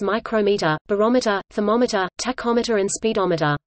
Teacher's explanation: use the pronunciation with stress on the second syllable. The latter pronunciation follows the stress pattern used for the names of measuring instruments such as micrometer, barometer, thermometer, tachometer and speedometer.